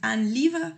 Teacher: la palabra termina en e, pero yo no estoy pronunciando esa e